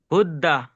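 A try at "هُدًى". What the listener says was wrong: হুদ্দা কেন পড়ছেন? দেখেন আপনি পড়ছেন হুদ্দা, হুদ্দা হতে গেলে দালের উপর তাসদিদ হতে হবে। যেহেতু দালের উপরে শুধু খাড়া জবর আছে, তাহলে কেমন পড়তে হবে সিম্পল ভাবে বলেন? হুদা।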